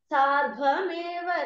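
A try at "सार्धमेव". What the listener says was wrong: It is not सार्ध्व सार्ध.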